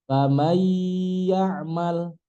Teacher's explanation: Contohnya miwa, miwa, famayyamal. Riwayat kita nun mati ketemu ya itu mesti pakai gunnah, mesti pakai dengungan. Famay nggak boleh, mesti famay.